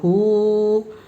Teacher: ہاں کے اوپر الٹا پیش ہے، الٹا پیش برابر ہے واو مدہ کے، اس لیے الٹا پیش کو ایک الف کے برابر کھینچ کے پڑھیں گے